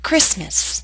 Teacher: Christmas is one of those words in English that is written with the T, but we don't pronounce it.